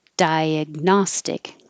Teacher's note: Your tongue goes to the G position, diag, and you just stop the airflow and don't release diag. Just hold it, and then Gnostic.